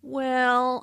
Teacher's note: Notice how the vowel is drawn out to sound like well.